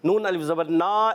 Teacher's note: ایک الف کا غنہ ادا کریں گے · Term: ادغام مع الغنہ